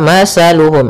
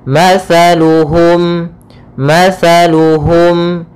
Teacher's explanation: makhrajnya yaitu dari ujung lidah kita ujung lidah menempel dengan gigi seri atas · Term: huruf tsaa